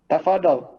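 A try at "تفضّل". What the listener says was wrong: Tafaddal. Nah, jadi dotnya bertasydid. Sebagian ikhwan saya sering simak mengatakan tafadhal. Tafadhal ini tidak ada Arabnya. Tidak ada salafnya dan tidak ada Arabnya. Jangan tafadhal. Tafaddal. Dot bertasydid. Dot musyaddadah. Tafaddal.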